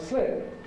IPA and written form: slɪp (slip)